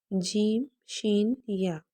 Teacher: جیم شین یا ہماری زبان اور تالو کے ملاپ سے ادا ہوں گے، یعنی جیم اور شین اور یا کی ادائیگی کرتے وقت آپ نے یہ خیال رکھنا ہے کہ زبان کا درمیان اور اوپر کا تالو دونوں ٹچ ہونے چاہیے، دونوں صورت میں، جیم میں اور شین میں اور یا میں۔